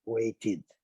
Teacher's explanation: Sempre lembrando, waited, porque terminou em T, você tem que acrescentar uma sílaba